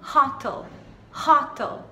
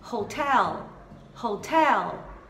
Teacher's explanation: mais forte na última e a gente tem que colocar a língua para cima, então é hotel, L.